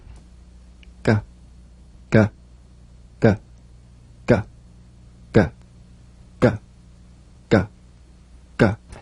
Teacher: you'll feel a crisp tap and a voiced pulsation of the back of the tongue · place the back of the tongue in gentle contact with the soft palate let the tongue spring away play this drum beat on the springing action of the back · the voiced tongue back plosive consonant G place the back of the tongue in gentle contact with the